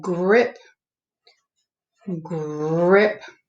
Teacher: is more the bossy r then i have grip grip you hear how the r is kind of long